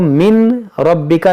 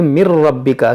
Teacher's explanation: اب یہاں پر غور کریں آپ، نون ساکن کے بعد را ہے، اس کو من ربک نہیں پڑھیں گے بلکہ اس کو پڑھیں گے مر ربک، کیونکہ نون ساکن کے بعد را ہے. یہاں پر ادغام کریں گے اور بغیر غنہ کے